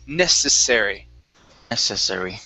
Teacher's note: use an unvoiced S here